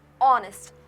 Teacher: So now you have to note that in honest the letter H is silent. H is silent. We are not pronouncing the H. We pronounce it as honest like it is written here which begins with the vowel sound of O.